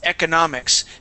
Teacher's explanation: I bounce through that second syllable to get to that third one, which is the stronger of the two stresses.